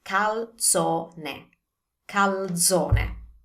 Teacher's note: We have an L and a Z, and you know that we pronounce the Z as ts